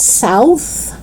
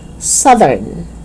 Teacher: it's south voiceless but when you add urn it becomes voiced southern